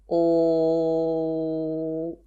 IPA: l